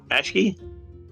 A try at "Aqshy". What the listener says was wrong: Akshi? So it's Akshi, not Ashki.